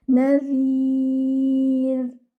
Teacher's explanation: Okay, your noon should be light. Your zal should be from its proper makhraj. That is, the tip of your tongue will touch the edges of the front teeth, and your ra will stay light.